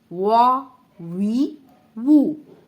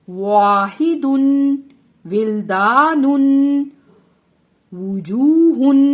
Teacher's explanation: واو کو ادا کرتے وقت ہم ہونٹوں کو گول کریں گے اور سائیڈ والا حصہ یعنی کنارے آپس میں ملیں گے اور درمیان میں سے ہونٹ کھلے رہیں گے، ٹھیک ہے؟ تب جا کر واو ادا ہوگا۔